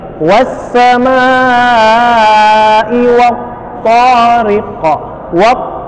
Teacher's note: wab dia ketahan, dia berhenti seperti ada yang lengket gitu. Bukan wat-to enggak, tapi dia wab.